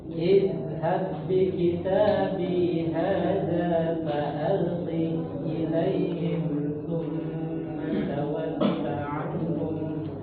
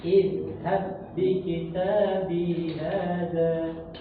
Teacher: Huruf zal itu dia memiliki sifat rakhawah, rikhwah. Jadi dia mengalir ya. Idhab. Jadi bukan idhab bukan, tapi mengalir.